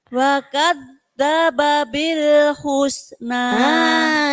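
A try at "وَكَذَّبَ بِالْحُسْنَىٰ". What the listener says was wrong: Ini baru bagus ya. Jadi jangan ada babil. Oke, bagus.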